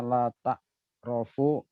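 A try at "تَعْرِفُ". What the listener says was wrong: Ain fi'ilnya ro atau ri?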